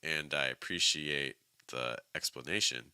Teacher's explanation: the heaviest stress is on explanation but notice that appreciate goes up a little bit in Pitch